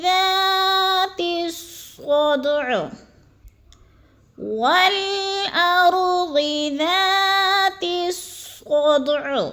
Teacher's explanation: صاد کو فل موٹا اور دال پہ قلقلہ، کیونکہ یہ قلقلہ والے حروف میں سے ہے اور ساکن ہے